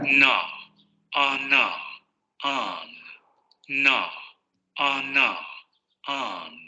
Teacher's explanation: la lengua va a subir hacia la zona alveolar de la cavidad oral, y va a haber vibración de las cuerdas vocales, ¿no? Justamente en los alvéolos es donde se va a producir este cierre de la cavidad oral. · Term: Alveolar nasal sonora